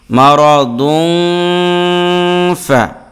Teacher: এই নুন সাকিন অথবা তানবিনের উচ্চারণটাকে 19 কারের মতো করে মানে লুকাইয়া নাকের ভিতরে নিয়ে গুণনা করে আদায় করতে হয় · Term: ইখফা